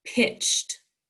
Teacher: what sound is ed making ah g is an unvoiced sound so ed is unvoiced making the t